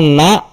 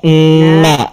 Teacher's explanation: kalau na yang pertama itu pasti tidak bergetar hidungnya kalau yang tadi ditahan n na itu ada getaran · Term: sifat Nun